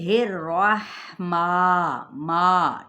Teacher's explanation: جوف دہن سے یہ حرف نکلنے والا ہے، یعنی منہ کے خالی حصے سے